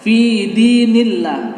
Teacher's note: nillah itu pengucapan lafaz Allah itu lebih ringan daripada Allah atau nasrullah. Ini fi dinillah tipis, lebih kerasa bahwa ini ringan ucapan daripada lafaz Allah tersebut. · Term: tarqiq tipis